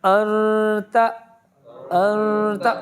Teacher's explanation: نون کی آواز جائے گی, پورا نون نہیں آئے گا. نون پر آواز رکھی ان, اب پہلے نون پر آواز رکھے ان, پورا نون لے لیا, گرپ ہو گئی, اس کو ہلکا سا سلپ کر دے بس.